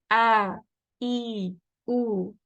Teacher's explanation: Hamza is from the lower throat, close to the chest. So this area right here, the lower throat.